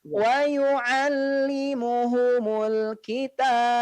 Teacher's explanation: Ya, jadi ba-nya di sini pastikan memantul karena memang huruf ba ini dia memiliki sifat pantulan, memantul ya